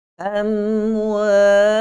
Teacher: Kita panjangkan dengung pada huruf mim mati. Sedangkan tidak ada panjang dengung pada huruf mim mati selepas dia ada huruf waw